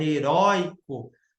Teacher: Você não fala heroico, você fala heróico. O O é mais forte que o I.